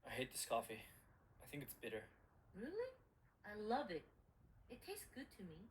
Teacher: She, on the other hand, is opposing his opinion, so she's going to stress love.